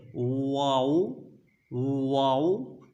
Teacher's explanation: दोनों होंठों को गोल करके ना तमाम बंद करने से, मतलब ऐसा गोल करें ना वो बंद शुमार हों ना ज़्यादा खुले हों। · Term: वाव